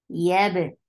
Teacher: Ya is soft, attached with ba, ba will get sifa of qalqala.